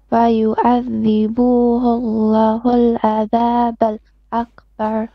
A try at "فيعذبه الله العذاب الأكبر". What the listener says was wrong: You paused again on adha, and then you stretch a couple of dhamma on the فيعذبه. So you kind of reversing the short vowel and the long vowel. Sometimes on short vowels you're making them long, and here for example on the word Allah you need to make the lam, yeah, longer, but you're making it too short.